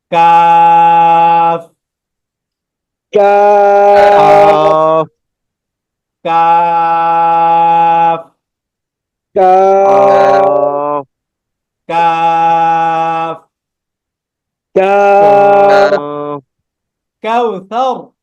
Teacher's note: জিহ্বার গোড়া থেকে একটু আগে বাড়িয়ে তার বরাবর উপরের তালুর সঙ্গে লাগিয়ে, অর্থাৎ জিহ্বার মাঝখানও না আবার গোড়াও না, গোড়া থেকে একটু আগে বাড়িয়ে আবার মাঝখান থেকে একটু আগে, ঠিক আছে?